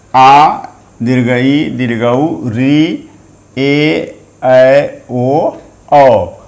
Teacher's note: इनके उच्चारण में 2 मात्रा का समय लगता है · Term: द्विमात्रिक स्वर वर्ण